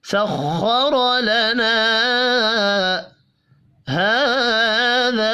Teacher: ہا کھڑی زبر کی وجہ سے، جبکہ ذا الف مدہ کی وجہ سے ایک الف کے برابر دونوں کھینچ کر پڑھے جائیں گے